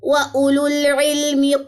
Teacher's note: یہاں پہ واو سائلنٹ ہے، ٹھیک ہے. وَأُولُول پڑھا جائے گا، واو نہیں پڑھا جائے گا.